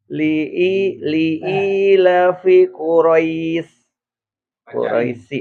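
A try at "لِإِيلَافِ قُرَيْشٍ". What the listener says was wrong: Enggak diwakofin. Panjang-panjang, Pak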